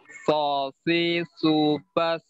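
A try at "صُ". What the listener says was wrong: Belum naik pangkal lidahnya ya, masih sama dengan huruf.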